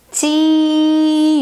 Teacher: So ji, you don't feel the air. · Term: no aspiration